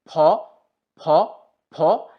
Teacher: ঠোঁটকে কাজে লাগাতে হবে কিভাবে ফি যখন আমি উচ্চারণ করব তখন এই দুটা লিপ একত্রিত হবে এবং একটু বাতাস বের হবে এবং বেশ ভালোই বাতাস বের হবে আপনি যদি মুখের সামনে হাত দেন তাহলে আপনি বাতাস অনুভব করবেন